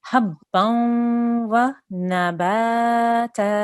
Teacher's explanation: The next letter is a vowel, so we need to make a nasal sound when we merge these two letters together